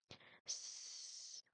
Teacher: The letter S, the sound of letter S is not really causing any much vibration to your throat, so that is why, in comparison to letter Z, S is voiceless, just like this.